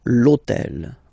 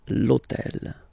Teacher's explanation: in French we don't pronounce H, okay, so basically the first sound of the word is the vowel O , okay, so for the same reason, needs to disappear, l'hôtel,